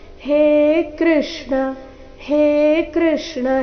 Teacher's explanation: ಅದು ದೀರ್ಘ ಬರಬೇಕು ಹೇ ಕೃಷ್ಣ ಇಲ್ಲಿ ಹೇ ಕೃಷ್ಣ ಈ ರೀತಿ ಕೃಷ್ಣ ಕೃ ಅನ್ನ ದೀರ್ಘ ಮಾಡಬಾರದು ಹೇ ಅಕ್ಷರವನ್ನು ದೀರ್ಘ ಹೇಳಬೇಕು